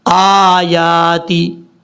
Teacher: یہاں پر حمزہ کو بھی لمبا کریں گے، یا کو بھی ، کیونکہ دونوں کے اوپر کھڑا زبر ہے، آیاتی ربہم الا